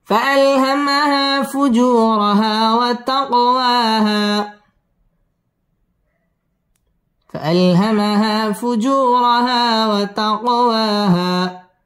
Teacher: কফ কলকলার হরফ ধাক্কা দিয়ে পড়তে হবে